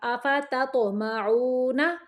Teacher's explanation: تا باریک تو موٹا